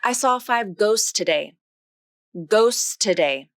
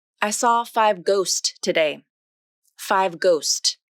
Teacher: If we follow the Rule of Three, then the middle T can be dropped